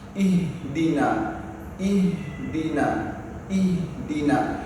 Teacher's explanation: Jadi huruf H itu tetap mengalir, jangan sampai ditekan. Jadi H itu biar saja mengalir karena memang H itu termasuk salah satu huruf yang rokhwa.